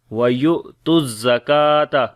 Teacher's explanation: وَيُقِيمُ الصَّلَاةَ وَيُؤْتُوا الزَّكَاةَ، یا کو حمزہ کے ساتھ ملائیں گے، حمزہ کے اوپر جزم آ گئی ہے، جھٹکا دیں گے ، وَيُؤْتُوا الزَّكَاةَ، کاف کو باریک پڑھیں گے اور لمبا بھی